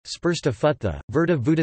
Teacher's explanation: ṛ also sometimes becomes u after labial consonants